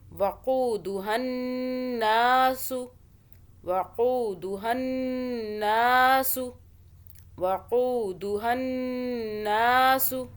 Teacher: وَقُودُهَا النَّاسُ قو کو کھینچا، واو آ رہی ہے، واو یہ مدہ بن رہی ہے، یعنی کہ ہم پچھلے قاف کو واو کی وجہ سے پیش ہے اوپر تو کھینچ رہے ہیں ایک الف کے برابر۔ آگے نون مشدد ہے، یعنی کہ اوپر تشدید ہے، 2 سیکنڈ کا غنہ کریں گے اور ایک الف بھی ہے ساتھ میں